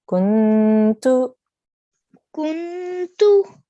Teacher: There's a slight nasal sound there when we're joining to the noon, right?